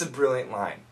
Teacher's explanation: T sound really weak